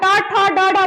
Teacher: ट ठ ड ड बोलते हैं ऊपर जिधर पहली बार टच हुआ वो मूर्धा है